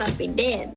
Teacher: the typical monophthong word dead becomes almost like a diphthong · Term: monothongization of diphthongs